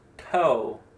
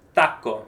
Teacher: In English, it's right behind your teeth, like toe. But in Spanish, you actually do it on your teeth